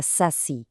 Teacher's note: A sílaba tônica, a mais forte, é o si.